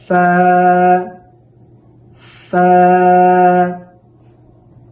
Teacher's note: সামনের উপরের দুইটি দাঁতকে নিচের ঠোঁটের পেটের সাথে লাগাই দিতে হবে